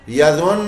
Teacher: غننے کی آواز آئے گی, نون مشدد رہے گا لیکن پیش کی آواز ختم ہو جائے گی. یظن غنہ کرتے ہوئے اور دو دفعہ نون کی آواز بنے گی.